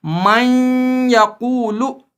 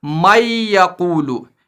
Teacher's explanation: تو اب اس کو پڑھیں گے من یقولو، نہ کہ مَن یقولو، یعنی نون کی آواز ختم نہیں ہوگی بلکہ ساتھ رہے گی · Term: ادغام مع الغنہ